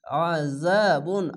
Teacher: আইনটিকে গলা চিপে মোটা করে পড়বেন